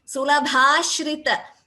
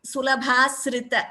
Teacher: So that sha should be chanted clearly, Bhagini. Please don't chant it as sa.